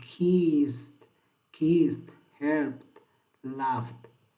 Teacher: It's not vibrating because it's voiceless sound. Your vocal cord doesn't vibrate.